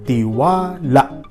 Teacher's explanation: igwapa nin impit o glottal stop sa huring silaba na la, tiwala. Iyan ang nangyayari kung ang paiwa nasa huring silaba.